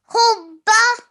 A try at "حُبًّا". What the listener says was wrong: Okay, it has a tanween on the top. Fathatain. Hubban.